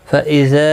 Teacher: یہ مد منفصل ہے، 3 الف کی مقدار کے برابر کھینچ کر پڑھیں گے